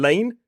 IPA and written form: leɪn (lane)